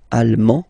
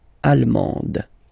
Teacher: you don't pronounce the final D, but then you pronounce it here for the feminine form